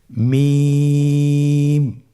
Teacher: মিম হরফটি উচ্চারণের ক্ষেত্রে অবশ্যই বারিক হবে, পাতলা হবে এবং 3 আলিফ টেনে উচ্চারণ করতে হবে · হরফটির উচ্চারণ স্থান 2 ঠোঁটের শুকনো স্থান থেকে উচ্চারিত হয়। এই যে আমরা 2টি ঠোঁট দেখছি, এটা যে শুকনো অংশ আসছে সেখান থেকে হরফটি উচ্চারিত হয়।